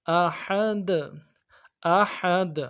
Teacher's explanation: ہا کو گہرائی سے ادا کرنا ہے احد کے